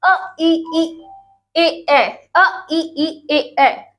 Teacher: जब आप इनका उच्चारण करेंगे तो आपके होठ कहीं भी गोल नहीं हो रहे हैं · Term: अगोली